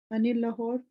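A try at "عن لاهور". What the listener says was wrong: अन कहेंगे ना, अन्नी लाहौर के ऊपर अल नहीं है तो ये जुड़ेगा नहीं उसके।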